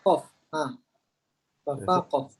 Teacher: Huruf qaf tempat keluarnya adalah pada pangkal lidah yang paling dalam, yang paling hampir dengan anak tekak kita.